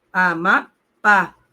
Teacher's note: A sílaba tônica é a última, logo é oxítona, termina em A, vai levar o acento.